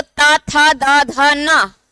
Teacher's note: ऊपर वाले दांतों से जीभ स्पर्श हो रही है